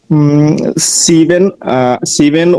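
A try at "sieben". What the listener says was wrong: সিভেন হবে? এস এর উচ্চারণটা কি হবে?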